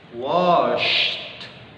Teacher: Washed, enggak begitu juga ya. Tapi di drop setelah kalian selesai melafalkan suara sh, baru di drop T-nya. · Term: letupan T